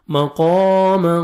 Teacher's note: قاف کو موٹا کر کے پڑھیں گے اور 1 سیکنڈ کھینچیں گے